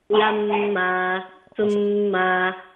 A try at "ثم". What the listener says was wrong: okay so the ميم don't prolong the ميم ثم غنى عند ميم ثم